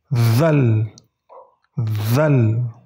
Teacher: Huruf Zal sama dengan pengucapan huruf Fa. Jadi ujung lidah kalian gigit sedikit.